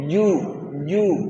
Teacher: একটা সিটি বেরাচ্ছে না জুয়ে, জু। আর জিমে সিটি হবে না, জিম পেশ জু, জু, তাই না?